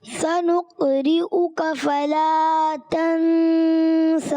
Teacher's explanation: سین کی ادائیگی کلیئر کرنی ہے دونوں میں, اور تنسا میں مد نہیں کریں گے